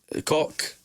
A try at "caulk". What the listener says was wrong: You've got to put the L in there